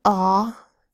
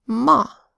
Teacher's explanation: letter A makes a broad a sound